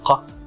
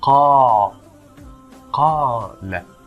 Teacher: We stretch it for 2 counts. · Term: mad